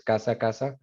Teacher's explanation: uso generalizado de S, no hay distinción entre casa y caza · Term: ceseo